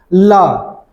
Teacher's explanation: जब ल का उच्चारण करेंगे आप उच्चारण करके देखिए ल हमारे जीवा के दोनों साइड से ठीक है हवा बाहर निकल रही है इसलिए ल को क्या बोलते हैं पार्श्विक व्यंजन ठीक है ठीक · वे व्यंजन जिनका जब उच्चारण करते हैं तो हवा जो है हमारे जिह्वा के पार्श्व भागों से अर्थात बगल से निकल जाती है, उसे पार्श्विक व्यंजन कहते हैं।